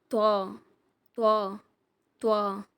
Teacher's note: உங்க நாக்கை தடிமனாக்கி நடு நாக்கால மேல் பற்களோட வேரை தொட்டு உச்சரிக்கணும்